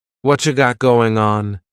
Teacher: Whatcha is what plus you. you becomes cha. What you got going on?